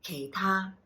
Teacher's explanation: down low for the K, up high for ta